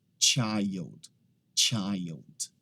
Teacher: Aqui algumas pessoas acabam falando child. Então aquele CH ali, ele não tem o som de sh, ele tem o som de ch